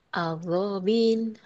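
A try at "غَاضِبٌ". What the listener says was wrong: titik, ada titiknya bukan agobil.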